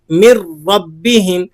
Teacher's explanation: یہی وجہ ہے کہ ہم یہاں پر نون ساکن پر غنہ ادا نہیں کر رہے بلکہ اسے پڑھ رہے ہیں من ربہم۔ دیکھیں نون کا را میں ادغام تو ہو گیا لیکن بغیر غنے کے۔